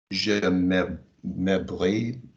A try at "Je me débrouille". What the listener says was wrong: No, don't join them.